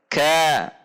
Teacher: Kaf adalah istifal atau Pangkal lidah rileks posisi di bawah jadi meskipun pangkal lidah naik ke atas menyentuh langit-langit antara perbatasan lunak dan keras namun si pangkal lidah tersebut tidak ditegangkan atau rileks